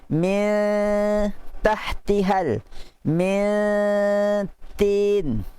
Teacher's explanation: lidah kita naik tapi tak kena lagi lelangit tu, dalam keadaan bunyi dah ke batang hidung kita. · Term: nun ikhfa